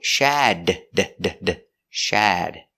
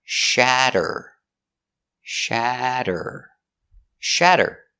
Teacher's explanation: we change the t to a d because it's between vowels